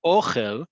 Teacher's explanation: where the emphasis is on the first syllable, on that o. Ochel is food.